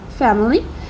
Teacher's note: for elition we have family it will skip the vowel in the second syllable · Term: elision